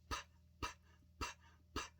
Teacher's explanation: sound the P sound is made with your lips PP again you close your lips open them and the air comes out